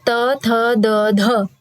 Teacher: तो लृ, तवर्ग, ल और स, ये दंत से बोले जाएंगे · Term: दंत्य वर्ण